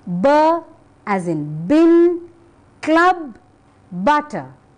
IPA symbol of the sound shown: b